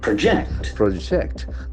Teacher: if a verb the accent will be the second syllable